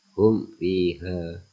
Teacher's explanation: mim yang dibaca secara jelas di bibir ketika diikuti oleh semua huruf jayyah yang mana huruf jiyah berjumlah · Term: izhar syafawi